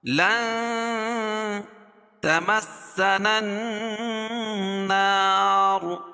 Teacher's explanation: اور یہ نون مشدد ہے، نون مشدد میں غنہ ہوتا ہے۔ نون کے بعد جو الف ہے اس کے بعد والی الف اور اس کے بعد والی لام، یہ تینوں نہیں پڑھی جائے گی، نون کو ڈائریکٹ دوسرے نون ملائیں گے۔